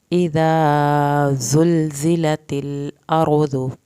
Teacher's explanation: इज़ा ज़ाल को नरमी से पढ़ना है, ये आगे ज़ा आ गए तो ज़ा सख्ती से पढ़ा जाएगा।